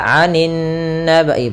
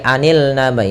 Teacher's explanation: alif lam yang dia tertulis tapi tidak dibaca, langsung ke huruf setelahnya. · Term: alif lam syamsiyah